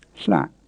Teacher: We call it the creaky tone because you have to tighten your throat to say it, and that gives it a slightly creaky quality.